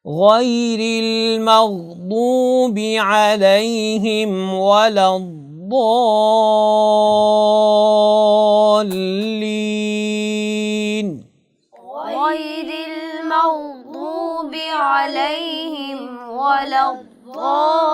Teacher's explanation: جی ضاد کی ادائیگی کے وقت جب آپ ضاد کو ادا کر رہے ہیں تو آپ الف کو بھی ساتھ موٹا پڑھیں گے، اور الف کو مد جتنی آپ نے کھینچنی ہے آپ نے الف کو بھی موٹا پڑھیں گے.